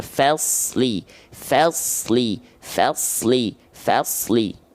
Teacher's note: Tebalkan shad-nya, tipiskan fa-nya.